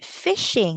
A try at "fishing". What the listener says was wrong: Again, not pitching. Fishing.